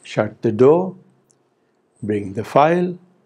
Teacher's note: the same sentence which is said as a command for example shut the door can be said as a polite request if we use a rising tone in place of falling tone